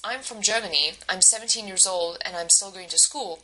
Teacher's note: she uses Rising falling intonation at each ending of her phrase so it falls on Germany it falls on old and it falls on school